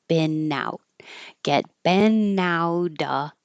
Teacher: And now when I release it, I'm not releasing the airflow for the T. I'm just pulling it down and making the in connect to the O.